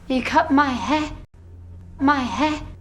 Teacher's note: Natalie Portman here removes the r from the end of the word hair but leaves behind only a short vowel